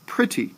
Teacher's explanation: if you hear me say it, pretty, I start off stressing that word, don't I? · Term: stressed, unstressed